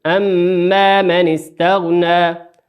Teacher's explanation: الميم المشددة تغن بمقدار حركتين. أما من استغنى ما نقول أما من استغنى، لا، نقول بمقدار حركتين نشد الميم أما من استغنى.